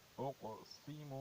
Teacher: کاف پہ کلکلا کرنا چاہیے اور سین پر حروف صفیر میں سے اسے سیٹی جیسی آواز نکالنی چاہیے